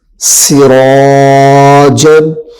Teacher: الف زبر را سرا سرا سرا جیم دو زبر جم سراجن سین کے اوپر سیٹی کی آواز کو ظاہر کرنا ہے